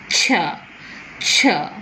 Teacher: It cannot go out because the two articulators are in contact, the tip and blade of the tongue and the alveolar ridge, or little behind the alveolar ridge. And when the contact is gradually released, the air goes out with friction, and it's just like a fricative, and both the affricate and affricate is both the coming together of the plosive and the fricative, and it is ch, ch. · ch is a voiceless palato-alveolar affricate